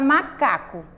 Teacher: uma palavra paroxítona por quê porque a sílaba mais forte é a penúltima sílaba